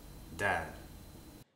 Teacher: is very similar to an english d it's the same thing the point of articulation is behind the top row of the teeth where your tongue meets your gums